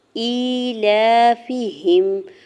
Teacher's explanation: حمزہ کے نیچے کھڑی زیر دو حرکت کھینچ کے ادا کریں گے، لام کے اوپر کھڑی زبر دو حرکت کھینچ کے ادا کریں گے۔ فا کی زیر کو بغیر کھینچے ہوئے ادا کرنا ہے، ہا کی زیر کو میم ساکن کے ساتھ ملاتے ہوئے پڑھیں گے۔